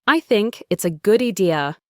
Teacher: So think and it's linked together. Good and idea can link together. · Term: connected speech